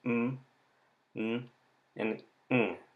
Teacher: For nasal sounds, the velum is open.